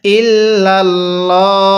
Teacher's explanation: ভিডিওটি দেখতেছেন তারা বলবেন এই লামটাকে কেন মোটা করে পড়বো হ্যাঁ এই লামের পূর্বের হরফের উপরে জবর আছে এজন্য মোটা করে পড়বো